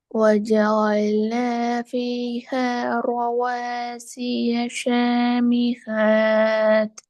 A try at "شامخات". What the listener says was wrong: சாமி ஹாத் பிழை. ஹ சவுண்ட் வராது, ஹேண்ட் வராது. எப்படி வரும் இது? ஹேண்டா வரும். பிழை. ஹ ஹ என்றால் பிழை.